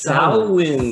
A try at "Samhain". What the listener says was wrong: it's not Shemaine, it's Samhain.